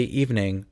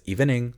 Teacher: He pronounces the second E in evening. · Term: an extra syllable